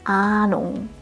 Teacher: Es beginnt mit einem langen A. Bei diesem Vokal solltest du den Mund möglichst weit aufmachen. Ahnung. Nur so wird er richtig deutsch klingen.